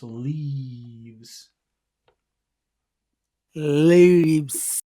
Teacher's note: when you make the e, you pull your tongue back. Make your tongue really tense.